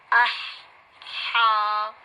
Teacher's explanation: ہا جو کہ حلق کے درمیان سے نکلنے والا حرف ہے